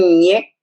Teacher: es un sonido palatal o sea cuando nosotros apoyamos la lengua en el paladar